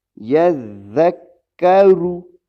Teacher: را موٹا پڑھا جائے گا کیونکہ اس کے اوپر پیش ہے۔